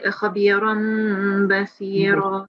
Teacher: And we have to pronounce it for at least 2 seconds, the meme sound. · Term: ikhfa shafi